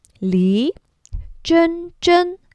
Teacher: Second tone up for Li.